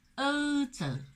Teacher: 各位一定要注意口型不要收圆，如果读成了欧洲就怪了。上海人口型是扁的